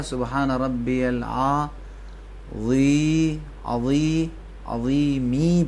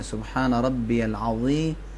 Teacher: زیر ہے. زیر کے بعد یا ہے؟ نہیں. یا نہیں ہے، تو کھینچنا نہیں.